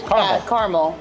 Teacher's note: there are certain Americans who would just pronounce it with two syllables